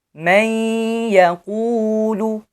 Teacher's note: then idgham will occur here with gunna.